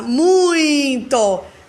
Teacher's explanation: Começa lá em cima e depois diminui. Muito. Vogal e semivogal.